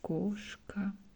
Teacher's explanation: Some people in Russia pronounce it more clear, like koshka, and you hear A very well